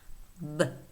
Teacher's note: Then the voiced bilabial stop, b. Next, we have the voiceless alveolar stop, t, t.